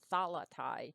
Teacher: even though it looks like a long diphthong, the I of thalatai is actually a short sound, because we can keep the accent on the first syllable.